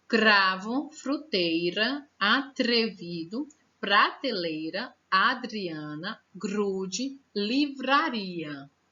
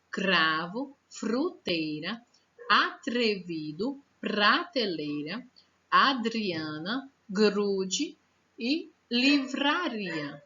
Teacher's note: Olha só, gente, o Rá aqui no finalzinho, como ele não tá tão forte. Esse som que a língua treme é o som do R mais fraquinho.